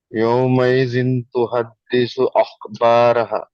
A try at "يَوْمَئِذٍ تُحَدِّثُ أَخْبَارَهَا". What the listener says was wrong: اخ آپ نے موٹا پڑھا، با کو باریک پڑھیں گے. اخبارها نہیں پڑھیں گے، اخبارها نہیں پڑھیں گے، بلکہ اخبارها، اخبارها. را کو موٹا پڑھیں گے، اخبارها، اس طرح پڑھیں گے.